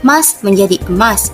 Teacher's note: protesis, tambahan bunyi di awal kata